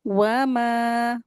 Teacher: मीम को दो हरकत खींचेंगे